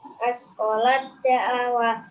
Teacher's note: Askolat da'awa termasuk bacaan idgham mutajanisain. Alasannya tak sukun bertemu dengan dal. Cara membacanya double masuk ke huruf berikutnya.